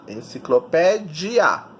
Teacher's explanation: sílaba tônica é o pé, e ela é terminada em ditongo, IA, enciclopédia.